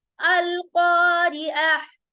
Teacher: अगर हम इसको कंटिन्यू पढ़ने वाले हैं ऐसे, अल क़ारिअतु मल क़ारिअह, अगर हम इसको कंटिन्यू कर रहे हैं, आयत को हम स्टॉप नहीं कर रहे हैं अगर, तो इसको हम ता ही प्रोनाउंस करेंगे। अगर इसको वक्फ करेंगे तो हम इसको ता नहीं बल्कि हा में तब्दील करेंगे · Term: ताए मरबूता